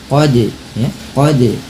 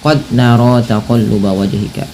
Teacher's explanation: dal yang berharakat sukun, maka pantulkanlah bunyinya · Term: qalqalah